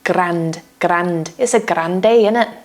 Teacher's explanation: Can you hear the retroflex R?